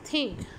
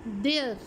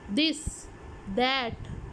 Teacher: टंग जो टिप है वो या तो आपके अपर टीथ को या टीथ के बिल्कुल पीछे आपके एल्व्यूलर रिज को टच करती है। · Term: डेंटल साउंड्स